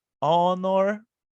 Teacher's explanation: nós não estamos pronunciando o H, estamos pronunciando o O